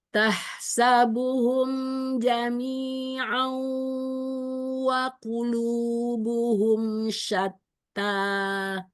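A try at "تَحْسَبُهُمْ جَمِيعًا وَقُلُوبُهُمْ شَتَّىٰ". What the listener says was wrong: Masya Allah, haknya mau tipiskan lagi.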